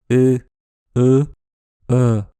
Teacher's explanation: c'est la voyelle la plus neutre, c'est ce qui se passe quand on prononce une voyelle sans rien faire de spécial avec la bouche. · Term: le schwa